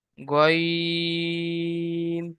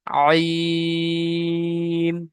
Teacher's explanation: গয়নটা উচ্চারণ করার সময় মুখ গোল হয়ে যাবে, আর আইন উচ্চারণ করার সময় মুখ স্বাভাবিক অবস্থায় থাকবে।